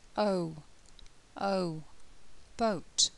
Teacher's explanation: made up of the two vow sounds uh and O um the mouth begins um half closed and becomes more closed throughout the sound